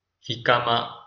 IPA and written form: ˈhɪkəmə (jicama)